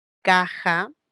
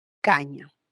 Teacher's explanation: Una J es velar y una ñ es palatal.